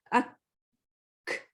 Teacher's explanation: جس سے قاف میں قلقلہ اور کاف میں ہمس ہوتا ہے. ہمس یعنی ہوا کی آواز